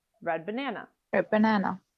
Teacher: in the phrase red banana you might drop the d completely red banana a banana or you might pronounce a glottal consonant